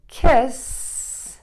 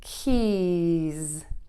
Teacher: the S is voiceless, your throat is not vibrating, versus the Z sound, your voice is on and vibrating